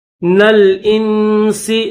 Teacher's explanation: نون کو لام کے ساتھ ملائیں گے، اور پھر یہ درمیان میں جو مڑا ہوا ہے یہ حمزہ ہے، حمزہ کے نیچے زیر ہے اور اس کو نون کے ساتھ ملائیں گے، آخر میں سین ہے.